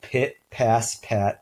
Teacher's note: the aspirated p with the puffs of air is the specific allophones so it occurs in a limited environment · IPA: [ pʰ ]